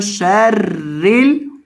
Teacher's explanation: اور را کو باریک کریں گے کیونکہ را کے نیچے زیر ہے. شرل وسواس الخناس, را کو باریک کریں گے.